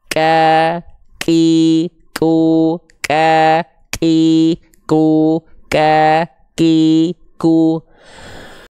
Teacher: kita lafalkan bukan mengalir nafas huruf kafnya tapi hanya berupa percikan percikan nafas saja · Keluar dulu percikan, baru keluar vokal A-nya.